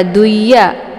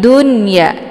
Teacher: Nah, ketika ada nun sukun dia menyatu dalam satu kalimat dengan huruf ya, maka dari hukum bacaan idgham berubah menjadi bacaan idhar ya. Jadi dibaca nunnya ini jelas, nggak boleh dibaca duya ya, tapi dunya jelas bunyi n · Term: idhar mamnu